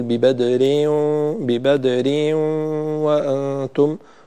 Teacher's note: البعض يولد حرف مد بعد كسرة الإدغام فنقول، فيقول ببدر، ببدر وأنتم، وهذا خطأ أيضا.